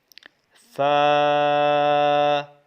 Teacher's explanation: اوپر والے دانتوں کے کنارے سے جب ہونٹ کا تر حصہ نیچے والا لگے گا تو یہ فا ادا ہوگا